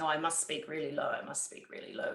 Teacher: we get into something called vocal fry and that's an american term but it's a sort of a gravelly sound